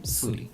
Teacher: this sh sound became a s Suri. Thus it became suri.